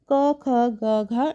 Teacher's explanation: कंठस्थ व्यंजन वो होते हैं जिनका उच्चारण कैसे होता है? कंठ से होता है